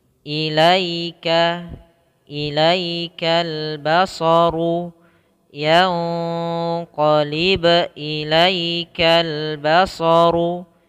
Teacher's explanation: matikan di ba, ini namanya qalqalah, dipantulkan